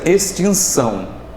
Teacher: o N, que é nasal da vogal I